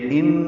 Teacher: ان یہ نون مشدد پہ غنہ اور الف مدہ ہے